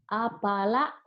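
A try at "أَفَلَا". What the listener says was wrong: Lanya panjang. Ada alifnya. Benar. Afala.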